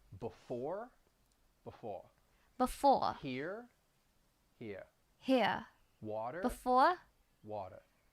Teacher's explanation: I'm dropping the r at the end of those words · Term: drop the r